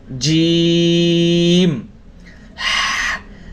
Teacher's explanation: জিম হরফ শক্ত হবে এবং তিন আলিফ টান হবে